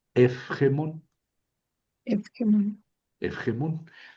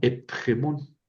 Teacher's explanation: entonces la pi se convierte en fi. En fi.